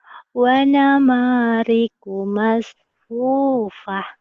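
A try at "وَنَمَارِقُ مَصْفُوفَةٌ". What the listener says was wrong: Kalau digedein kamu suaranya indah sebetulnya. Jadi jangan kecil-kecilin ya. suara dikecilin.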